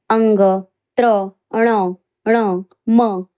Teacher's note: या वर्णांचा उच्चार ज्या त्या वर्णाच्या उच्चारण स्थानाबरोबर नाकातुनी होत असतो म्हणून यांना अनुनासिक वर्ण असे म्हणतात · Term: अनुनासिक व्यंजने